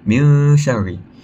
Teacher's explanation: So min syarril, bila kita baca itu dibaca dengan dengung dan dipanjangkan kepada 2 harakat